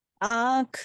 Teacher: हंसी बोलने पर जो हमारे मुंह से हवा निकल रही है ना वो नाक और मुख दोनों से निकल रही है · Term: अनुनासिक